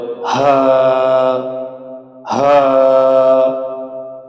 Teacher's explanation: হলকে শুরু হইতে একালিপ টেনে পড়তে হবে হা হা। খেয়াল করতে হবে এই হায় কোনো বাতাস বের হবে না, গলাও চাপানো যাবে না। হা গলা খোলা রেখে একালিপ টেনে পড়তে হবে হা হা হা।